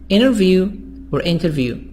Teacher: I can make the T silent because there is N before the T.